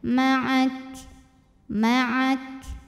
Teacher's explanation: saja F maak kafnya jangan lupa keluarin angin belakangnya ya dan untuk Kaf yang sukun ini anginnya keluarnya belakangan terakhir